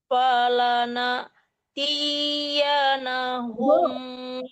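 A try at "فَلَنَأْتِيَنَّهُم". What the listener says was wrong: Bu, T-nya tidak panjang, kan ya-nya ada harakatnya. Falana tiyan, nah didengungkan kan non tasdid.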